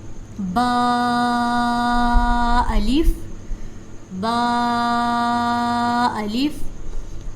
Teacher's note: اب با کا مخرج پڑا تھا کہ جب دونوں ہونٹوں کو آپس میں ملاتے ہیں تو با ادا ہوتا ہے، اور با کو 1 الف کے برابر لمبا کیا جاتا ہے